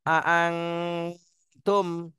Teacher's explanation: মিম সাকিনের পরে বা আর মিম থাকলে গুণা হয়, আর এই দুইটা না থাকলে গুণা হয় না। এখানে মিম সাকিনের পরে বা আর মিম কোনোটাই নেই, এজন্য স্পষ্ট করে পড়তে হবে